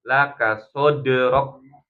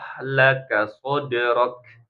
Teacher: R rok udaranya dikeluarkan rok ya ak ya jadi berhenti dulu suaranya syiddah kemudian hams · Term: kaf sukun